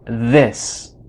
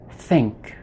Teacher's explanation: we have the voice sound and the voiceless sound · So the voiced TH sounds like the TH in this. The voiceless TH sounds like the TH in think.